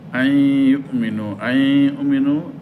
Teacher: নুন সাকিনের পরে ইয়ে আসছে, মিলবে গুন্নাহ হবে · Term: এদগামে বা গুন্নাহ